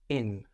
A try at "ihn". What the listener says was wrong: ihn, I-H-N. So that H makes that E sound, that I a little longer, ihn.